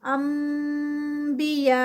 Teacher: नून है उसको स्किप करके वहाँ पर मीम आ गया, यानी मीम की साउंड आ गई, ऊपर लिखा हुआ है मीम। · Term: इक़लाब